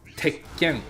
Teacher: There's a chisai tsu when you write it. So there's supposed to be emphasis on the consonant sound that is preceding the small tsu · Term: double consonant